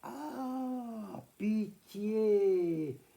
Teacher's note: J'entends bien le I, traînard, le I étiré. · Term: semi-voyelles